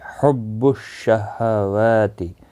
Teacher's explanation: واو کے اوپر کھڑی زبر ہے، ایک الف کی مقدار کے برابر کھینچ کر پڑھیں گے